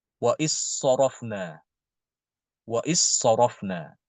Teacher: langsung masuk ke dalam huruf Shad jadi dalnya tidak dibaca · Langsung masuk ke dalam huruf sod. Jadi dalnya tidak dibaca. Ini, ya. Jadi untuk huruf-huruf yang sofir, kalau bertemu dengan huruf sofir setelah dal, maka dalnya itu diidghamkan ke huruf tersebut.